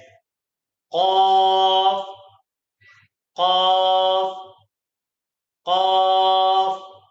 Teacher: The next letter is Qaf. This letter comes out from the raised back portion of our tongue when it touches the top of our mouth as Qaf, Qaf, Qaf.